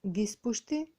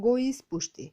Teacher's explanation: При допир на два збора, од кои првиот завршува со самогласка, а вториот започнува на самогласка, самогласката од првиот збор се губи.